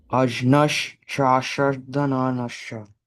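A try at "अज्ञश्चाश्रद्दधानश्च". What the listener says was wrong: So, don't you don't like actually pronounce the J. The J becomes like kind of like a G sound.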